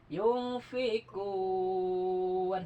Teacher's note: ini mata bi'i bertemu huruf lain yang disukunkan mendadak disebut mad arid lis sukun panjangnya 6 harakat ya.